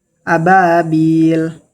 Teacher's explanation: Mad thobbi'i pada huruf ba yang diikuti alif dibaca panjang dua harakat.